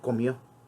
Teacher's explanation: La pérdida de la D intervocálica o la alteración de algunos fonemas en el uso de las palabras al momento de estarnos comunicando.